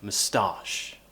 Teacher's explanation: sound and we move the stress so we say mustache so we have the weak syllable at the beginning with a schwa sound and then we're going into the stressed syllable